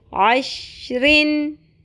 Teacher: کیونکہ شین پہ قلقلہ نہیں ہوتا، شین کو فکس رکھنا ہے، ہم نے جما کے پڑھنا ہے